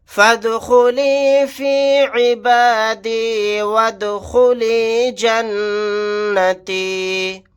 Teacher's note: دال ساکن ہے, یہاں پر قلقلہ کر کے پڑھیں گے